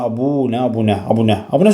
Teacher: Abunə sözündə uzanma yoxdur ümumiyyətlə